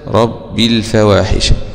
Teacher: عن حمزة ودور الكسائي بخلفه، قوله تبارك وتعالى حرم ربي الفواحش حذف الياء وصلا حمزة